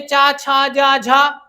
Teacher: झा का उच्चारण स्थान ताल से